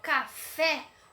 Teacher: oxítona acentuada assim como a palavra café quando eu falo café o fé saiu com maior intensidade na minha pronúncia · Quando eu falo café, o fé saiu com maior intensidade na minha pronúncia. Ou seja, a minha última sílaba dessa palavrinha é a minha sílaba mais forte. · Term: sílaba tônica